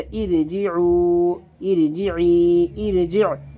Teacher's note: اگر زیر عارضی ہو تو را باریک نہ ہوگی بلکہ پر ہوگی